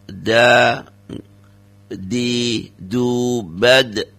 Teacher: da ini tidak boleh ada tidak ada nafas yang keluar.